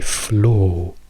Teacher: la cosa più simile che io capisco è una O chiusa lunga, quindi flow, e solo in British English questo vuol dire 2 cose.